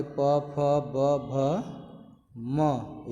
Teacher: इसका उच्चारण करने के लिए हमें अपने दोनों होठों को संपर्क में लाना होता है। जैसे ही हम बोलने जाते हैं प, यानी दोनों हमारे मुख जो है ओष्ठ आपस में सट जाते हैं, मुख बंद हो जाता है।